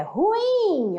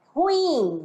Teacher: a acentuação está na última sílaba. Ruim, né?